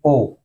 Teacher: डी ओ। ओ कंठोष्ठ है क्योंकि ओ कंठ और ओष्ठ से बोला जाता है।